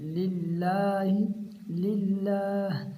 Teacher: اللہ تعالیٰ کے نام کو باریک پڑھنا ہے کیونکہ اللہ تعالیٰ کے نام سے پہلے زیر ہے ، اگر زیر ہو تو اس کو باریک پڑھتے ہیں للہ